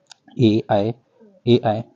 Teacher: ए ऐ यहां से कंठ से पहले बोलेंगे उसके बाद तालव्य आपका आ जाता है